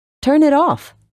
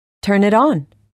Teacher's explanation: In phrasal verbs, the stress is on the last word.